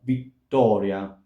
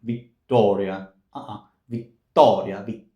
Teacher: remember that the English t is more towards the back of the mouth, slightly more towards the back of the mouth, whereas the Italian t, it's very front